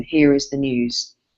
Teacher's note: think about how news readers go down at the end of the line.